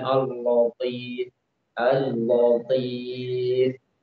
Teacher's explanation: Dia membaca lamnya dengan tebal.